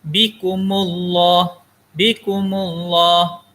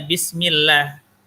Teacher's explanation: Tafkhim ini artinya tebal. Jadi bacaan tafkhim ini, bacaan Allah yang dibaca tebal.